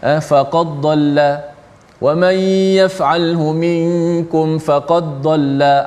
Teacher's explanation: Dibaca dengan idgham, dibaca dengan memasukkan dal ke dalam dad. Dia bunyi macam ni, faqad dhalla wa man yaf'alhu minkum faqad dhalla.